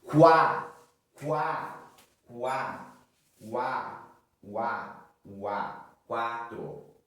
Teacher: Então o crescente ele vai crescer. Para crescer semivogal primeiro, vogal depois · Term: ditongo crescente